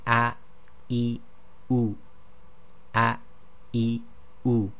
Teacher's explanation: It's an abrupt stopping of the airflow at the bottom of the throat. And if you were to say any English word which begins with a vowel and say it very slowly, you actually will hear this sound. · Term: glottal stop